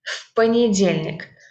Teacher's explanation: we actually pronounce it like one word, and this в is pronounced like ф